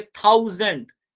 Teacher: थाउ में तो ठीक है, एंड में हमारा श्वा आ रहा है, तो ये बीच में आ गया। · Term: नॉन फाइनल